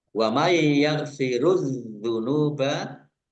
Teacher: nun sukun bertemu dengan huruf ya, bacaan idgham bi gunnah masuk dengan mendengung, yaitu mendengung ya ditandai yaknya ada tasdidnya. · alif lam samsiah karena tidak dibaca langsung masuk ke huruf berikutnya yaitu zal, ditandai zalnya ada tasdidnya. Zalnya dibaca double.